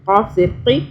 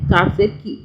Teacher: یہ جو قاف ہے نا یہ بھی موٹا ہے، ٹھیک ہے، قاف، اس کو کاف باریک نہیں پڑھنا، موٹا پڑھنا ہے